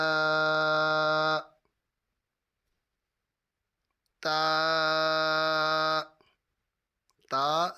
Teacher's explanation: زبان کی نوک اوپر کے دانتوں کی جڑ سے ادا ہوتا ہے، اور اس تا کو ہم نے باریک پڑھنا ہے، موٹا نہیں پڑھنا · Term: حرف نطعیہ